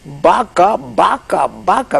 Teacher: había que hacer la fricativa había que dejar salir el aire un poquito · es la V, que contrasta con la B, pero solo en cuanto a la grafía, porque se pronuncian iguales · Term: bilabial